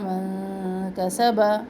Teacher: یہاں پر ہم من پر باریک خفا کریں گے